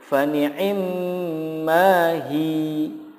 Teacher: Jika waqaf, cara membacanya menjadi fani'imma hi. Hi-nya dipanjangkan.